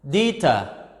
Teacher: So deter, t, is at the end of the word. The second syllable or the last syllable is stressed.